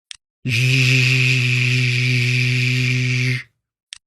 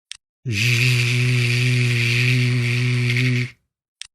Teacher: The zh is a voiced sound, so don't forget to add your voice. Remember, the fricatives are continuous sounds, and this is also true for the zh consonant. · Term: zh sound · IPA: /ʒ/